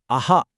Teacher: ఇక ఫైనల్గా విసర్గ. ఇది అచ్చు తర్వాత ఒక చిన్న బ్రీతి హ సౌండ్ ఇస్తుంది. ఉదాహరణకి అహా అన్నప్పుడు చివర్లో వినిపించే సౌండ్.